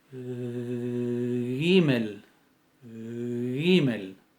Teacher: Es velar sonora fricativa.